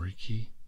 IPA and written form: ˈreɪkiː (Reiki)